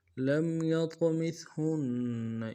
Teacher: یا کو طا کے ساتھ ملانا ہے، طا کو موٹا کریں گے، اور طا جب ساکن تو قلقلہ ہوگا · لام کو میم ساکن کے ساتھ ملانا ہے، میم ساکن میں غنہ کریں گے ، یا کو طا کے ساتھ ملانا ہے، طا کو موٹا